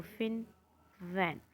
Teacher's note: जब भी हम लेबियोडेंटल साउंड्स प्रोड्यूस करते हैं तब हम क्या करते हैं, हमारा नीचे वाला होंठ और ऊपर वाले टीथ इनको आपस में मिलाते हैं, अटैच करते हैं · तो यहाँ पे ये फिन और वैन बोलते वक्त आपने नोटिस किया होगा कि हमारे जो ऊपर वाला जो हमारा टीथ है वो टच कर रहा है नीचे वाले लिप को